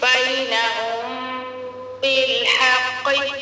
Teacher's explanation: क़ाफ रूफ़े मुस्तारिया पूरा और मोटा भी पढ़ना है